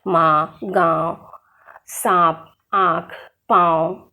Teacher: इसका उच्चारण करते समय हवा नाक और मुंह दोनों से बाहर निकलती है · अनुस्वार और अनुनासिक में अंतर, अनुस्वार के उच्चारण में हवा नाक से बाहर निकलती है, जबकि अनुनासिक के उच्चारण में हवा नाक और मुंह दोनों से बाहर निकलती है।